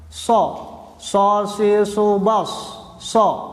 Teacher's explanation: Sifat isti'la yaitu pangkal lidah naik ke langit-langit.